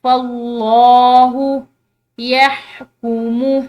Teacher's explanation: لفظ اللہ کی لام فا کے زبر کی وجہ سے موٹی پڑی جائے گی